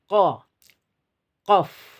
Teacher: Jadi pangkal lidah ini adalah titik dan ini gambar wifi, dia bertemu di sini. Jadi tempat keluarnya huruf hijaiyah qaf berada di pangkal lidah bertemu dengan langit-langit lunak. Ditempelkannya tertempel seperti ini.